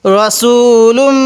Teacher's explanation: এক আলিফ টানতে হবে তাহলে লাম লাগবে এই মিমের সাথে লুম এখানে আমরা নাকের বাঁশি দ্বারা গুণনা করব কেন যখন দেখব মিম এবং নুনের উপর তাজদিদ মিম এবং নুনের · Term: গুন্না